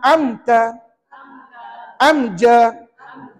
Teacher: cara bacaannya Bagaimana nyata terang jelas tanpa dengung bermakna tuan-tuan tak payah fikir nak bunyi sengau tak tak payah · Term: izhar